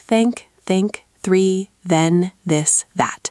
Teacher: For both TH sounds, you put your tongue tip lightly between your teeth. For the voiceless TH in think, you just blow air out.